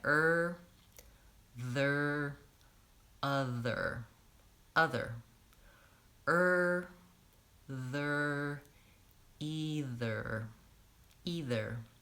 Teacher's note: you do have to start with your tongue forward for the th and back for the ER